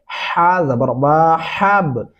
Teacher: ہا باریک ہا پڑھا جائے گا، یہاں پہ ہا موٹا والا نہیں پڑھیں گے